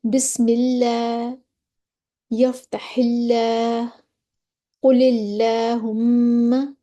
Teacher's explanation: लाम बारीक का पढ़ा जाएगा। लफ्ज़ अल्लाह या अल्लाहुम्मा से पहले ज़ेर हो तो उनको बारीक पढ़ा जाएगा। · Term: लाम की तरकीक